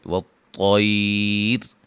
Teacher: جب یہاں وقف کریں گے نا تو را باریک ہوگی